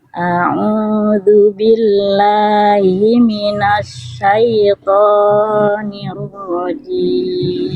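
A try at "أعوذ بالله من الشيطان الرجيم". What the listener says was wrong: Oke, pada penggalan to Bunda jangan sampai terlalu panjang. To-nya cukup dibaca 2 harokat saja. A'udzu Iya, itu masih kepanjangan. Tadi Bunda baca seperti ini. A'udzu billahi minasyaiton. Nah, ini 4 harokat ini harusnya syaitonir rajim.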